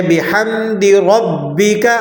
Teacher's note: را کو موٹا پڑھیں گے اور با پر تشدید ذرا سختی کے ساتھ ادا کریں گے